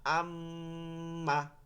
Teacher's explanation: হামজা মিম জবর আম, মিম জবর মা, আম্মা। এই যে আম ধরে রাখতেছি নাকের মধ্যে নিয়ে, আম, আন, এটাকে বলে গুন্না